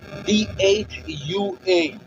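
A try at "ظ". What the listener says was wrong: D no. Z-H-U-A. Whistle sound is not allowed in this. Whistle sound is not allowed, but Z-H-U-A. Dua. Dua. D and Z. What difference between D and Z? Okay, don't mix D sound. D sound, A, B, C, D. D sound is not allowed in dua. Only Z, H. No, D also not allowed in this.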